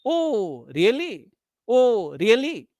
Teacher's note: Exclamation expressing sarcasm or irony. Example, oh, really? Oh, really? Oh, really? So first rise, then fall. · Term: rise fall